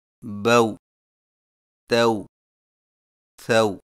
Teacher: ہونٹوں کو اوپر کی طرف کھولنے کے فوراً بعد گول کرتے ہوئے نرمی سے بغیر کھینچے پڑھیں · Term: واو جزم والی